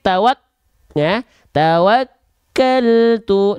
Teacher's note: pengucapan huruf Kaf disertai mengalirnya udara tidak dipantul juga namun sedikit tertahan